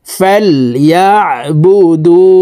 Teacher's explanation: এই আইন হরফকে হলকের মধ্যখান থেকে চাপ দিয়ে উচ্চারণ করতে হবে, কারণ আইনের মাখরাজ হলকের মধ্যখান থেকে হবে।